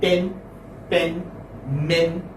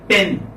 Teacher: So it is front, unrounded vowel between half closed and half open.